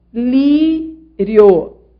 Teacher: Em lírio, o que nós temos é uma semivogal, que é o I, e uma vogal, que é o O. · Ditongo crescente, a semivogal vem antes da vogal.